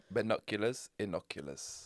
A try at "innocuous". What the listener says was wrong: Yeah, but it's not like plural. It's innocuous. Innocuous.